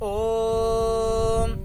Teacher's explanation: जब किसी शास्त्र का प्रारंभ करते हैं, किसी वेद पाठ प्रारंभ करते हैं या ईश्वर स्तुति प्रार्थना उपासना प्रारंभ करते हैं, तो ओम शब्द को हमेशा प्लुत बोलते हैं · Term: प्लुत ओम